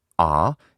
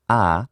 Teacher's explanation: you've just been using this back vowel ah instead of the central vowel ah